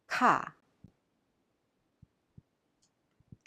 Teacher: Ka is a strong aspirated sound